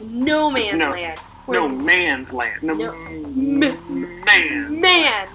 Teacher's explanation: he really hits that word man very hard